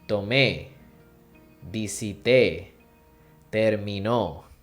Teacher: they have the stress at the very end of the verb